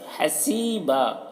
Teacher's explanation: سی میں یا مدہ ہے، اسے ایک الف کے برابر کھینچ کر پڑھیں گے اور با کے اوپر دو زبر کی تنوین ہے تو یہاں پر جب تنوین والے حرف پر وقف کرتے ہیں تو ایک زبر کے ساتھ الف کو پڑھا جاتا ہے.